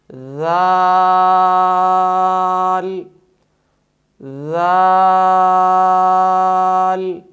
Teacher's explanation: 6 الف کے برابر اس حرف کو لمبا کریں گے، ذال ذال۔ نمبر 2، صفت جہر کی وجہ سے اس حرف کی آواز میں بلندی ہوگی، ذال۔